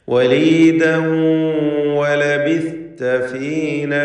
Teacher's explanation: വലീദൻ എന്നതിലെ തൻവീനിനെ ഇദ്ഗാം ബിഗുന്ന ചെയ്ത് ശേഷമുള്ള വാവിൽ ലയിപ്പിച്ച് മണിക്കണം